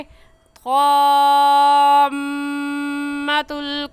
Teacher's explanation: मीम मुशद्दद है, गुन्ना करेंगे